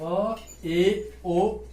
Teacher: अर्ध विपरीत मतलब हाफ ओपन मतलब आधा खुलता है।